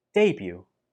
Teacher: There is no t sound in this word, even though the spelling uses the t, do not pronounce the t.